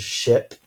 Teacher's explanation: for sure our vocal cords are not vibrating so it's voiceless